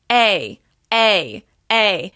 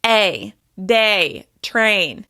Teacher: My mouth moves more on this particular sound than a more pure vowel, where your mouth stays more or less in the same position. My mouth opens to the Y shape. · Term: off glides